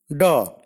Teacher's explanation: Da is a voiced alveolar plosive.